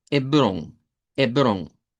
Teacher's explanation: Simplemente la E, como que la H no está, y esa O nasalizada, Hebrón. Así que ahí tendríamos ya esos nombres, ¿verdad?